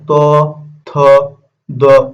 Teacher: এই ত, থ যখন আমরা উচ্চারণ করতেছি এই জিহ্বাটা কোথায় স্পর্শ করতেছে? দাঁতে স্পর্শ করতেছে। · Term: দন্তন্য